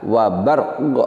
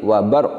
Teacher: Huruf ro, salah satu sifatnya adalah takrir, bergetar, pendek, sedangkan qaf salah satu sifatnya adalah qalqalah, yaitu tambahan bunyi pantulan.